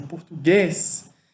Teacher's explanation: Português é uma palavra oxítona, em que a sílaba mais forte é a última, português, e aí você só vai acrescentar o ES quando você for passar para o plural.